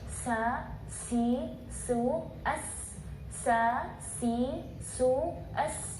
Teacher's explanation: Jadi kita merasa angin ketika pelafalan huruf sin itu sangat kencang karena memiliki dua sifat, yaitu sifat hams dan sifat shafir. · Kalau huruf sin dia satu arah, dan itu berasa kencang sekali ketika pelafalan huruf sin. Misalnya ketika kita pakai tisu atau juga kita taruh tangan kita di sini, kita bisa merasakan angin yang kencang.